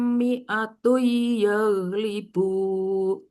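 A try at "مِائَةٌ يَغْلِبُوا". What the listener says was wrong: Kalau ini kan berarti ada dengungnya, Bu.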